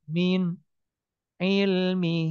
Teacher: jelas ditenggorokkan enggak ditahan enggak dipanjangin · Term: izhar halqi